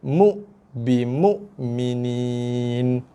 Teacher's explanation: Bimu, hamzah mati. Mu, hamzah mati bunyi keras solid bunyi dia.